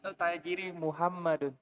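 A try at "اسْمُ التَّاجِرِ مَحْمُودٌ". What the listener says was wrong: Muhammad atau Mahmud? Mahmudun. Ismut tajiri. Mahmudun. Beda tulisannya ya. Mahmudun. Kalau Muhammad tidak ada wawunya. Kalau Muhammad bagaimana? Muhammadun. Kalau seperti ini Mahmudun. Meskipun nggak ada harokatnya, tapi kita bisa baca Muhammad, Mahmud.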